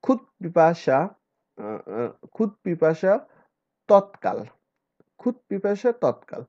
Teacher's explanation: দয়ের স্থলে অঘোষ অল্প প্রাণ ধ্বনি হয়